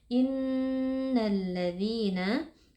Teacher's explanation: Nun tasydid wajib dibaca dengan gunah yang dipanjangkan